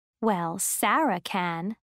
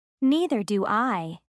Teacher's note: notice the stress on subject words when agreeing or disagreeing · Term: word stress